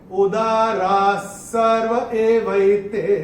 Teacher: पहले चरण में रा के बाद जो विसर्ग है उसके बाद का अक्षर है स, और विसर्ग के बाद जब स आएगा तो विसर्ग का उच्चारण होगा आधा स